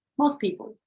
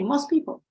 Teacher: You eliminate the T.